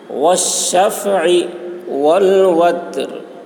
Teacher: تا میں قلقلہ نہیں ہوگا اور را باریک ہوگی. را کی آواز ظاہر ہوگی وقفے کی حالت میں.